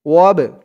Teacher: وقولوا لهم قولا معروفا وابتلوا اليتامى ওয়াও দিয়ে বা ধরবে ওয়াব বাটা কলকলার হরফ ধাক্কা দিয়ে পড়তে হবে